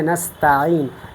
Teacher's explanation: سین ہے تو یہ بھی اس میں صفت صفیر پائی جاتی ہے، جس کی وجہ سے یہاں سٹی کی آواز ادا ہوتی ہے